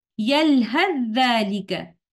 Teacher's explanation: अगर हम सूरतुल आराफ के इस मकाम पर इस अलामत जीम पर रुके बगैर एक ही सांस में यलहथ और जालिका को पढ़ते हैं, तो वहां पर हरफ सा को हरफ ज़ाल में इदगाम कामिल के साथ पढ़ा जाता है, और इस इदगाम को कहेंगे इदगाम मुतजानिसान, और इस लफ्ज की अदायगी इस तरह से होगी यलहज़ालिका।